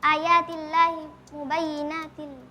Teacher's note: karena kasrotain bertemu dengan huruf lam. Hukumnya idgham bila gunnah. Dibaca tanpa dengung.